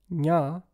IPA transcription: ɲ